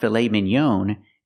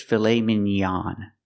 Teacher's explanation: pronounce it filet Minon it's not filet Minon it's filet minan we use the a sound the open a a like hot and stop